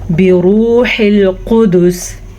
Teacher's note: را کو پر پڑھنا ہے اور را پہ پیش ہے، اور واو مدہ کو کھینچ کے پڑھنا ہے کیونکہ یہ واو مدہ ہے